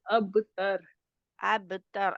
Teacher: रा के मखर पर पहुंचते ही रा के लिए जुबान की जड़ पीछे उठती है पीछे से तो वो मोटा होगा